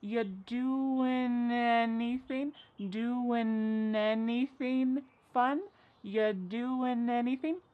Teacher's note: We link together doing because we're going to drop the G. It ends with the sound n, the N sound.